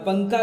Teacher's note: اب ہم نون کو ظاہر نہیں کرتے ہیں بلکہ نون کو چھپا کے پڑھتے ہیں۔ پنکھا کوئی نہیں پڑھتا ہے پنکھا، بلکہ پنکھا پڑھتا ہے، پنکھا پڑھتا ہے، تو گویا کہ نون یہاں پر چھپایا گیا ہے، نون لکھا جائے گا لیکن اس کو چھپا کر پڑھیں گے۔ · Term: غنہ